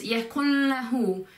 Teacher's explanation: It's like a mixture of the N sound and the L sound.